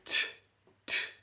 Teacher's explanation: tongue tip up, and it's just air, no phonation